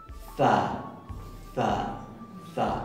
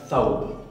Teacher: Esta letra es za, za, za, sacando la punta de la lengua. Se llama interdental fricativa sorda. Como por ejemplo en la palabra thawb, que quiere decir vestimenta o prenda de ropa.